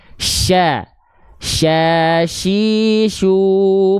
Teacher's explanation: tafasyi itu menyebar udara dari mulut